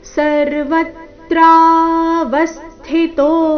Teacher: ವ ಮೇಲೆ ಆಘಾತ ತ್ರ ನಲ್ಲಿ ಆ ಸ್ವರ ಇದ್ದ ಕಾರಣ ಅದು ದೀರ್ಘ ಬರಬೇಕು · ವ ಮೇಲೆ ಆಘಾತ ತೋ ದೀರ್ಘ